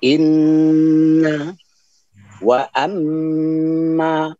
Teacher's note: nun dan mim bertasydid 100% keluar dari pangkal hidung. Nun dan mim bertasydid. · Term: dengung